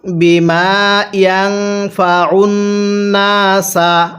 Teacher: আইনটা পড়ার সময় গলার মধ্যে চাপ দিয়ে পড়লে আইনটা সহি শুদ্ধ উচ্চারণ হবে।